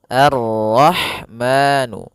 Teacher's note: Pada bacaan Ar-Rahman, di sini ada alif lam syamsiyah, yaitu alif lam yang ditulis tapi ia tidak dibaca, sehingga kita langsung masuk ke huruf ra